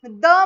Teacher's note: जीभ दातांच्या मागच्या बाजूला वर चिटकायली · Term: दंत्य वर्ण